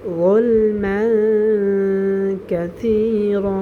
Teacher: জ উচ্চারণ হয় মোটা করে। যুলমান জিহ্বার আগা উপরে দুই দাঁতের আগার সাথে লাগিয়ে আমরা জ উচ্চারণ করব